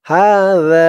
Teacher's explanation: আর খেয়াল করবেন জালের আওয়াজটা একদম নরম করতে হবে, জিহ্বার মাথা ওপরের দাঁতের মাথার সাথে লাগবে জালের উচ্চারণটা করার সময়